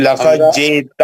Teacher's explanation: دال پر کلکلہ ہے. لقد جئت جھٹکا لگے گا